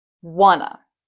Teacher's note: Once again, the emphasis is on the first part of the word.